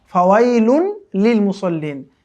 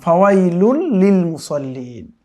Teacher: মূলত এটা ছিল ফাওয়াইলুন লিল মুসল্লিন, কিন্তু ওই যে দেখেন তানবিনের পরে কি এসছে, এই যে লাম এসছে, ইদগামের হরফ, কিন্তু গুন্না ছাড়া, মিলিয়ে পড়তে হবে। কেমন ফাওয়াইলুল লিল মুসল্লিন।